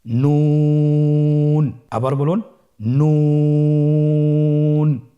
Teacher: নুন হরফটির উচ্চারণ স্থান হচ্ছে জিহ্বার আগা তার বরাবর উপরে তালুর সঙ্গে লাগিয়ে উচ্চারিত হয়।